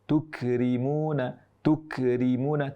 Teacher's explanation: mengucapkan huruf kaf bersukun tapi justru ada bunyi qalqalahnya, bunyi pantulannya. Boleh jadi sudah ada hamesnya, namun ternyata ada qalqalahnya.